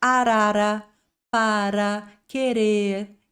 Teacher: você tem esse toquinho da língua no céu da boca